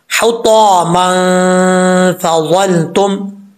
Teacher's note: होगा, इख्फा होगा। तो यहाँ पर नून तनवीन का इख्फा होगा, एक अलिफ की मकदार गुन्ना करेंगे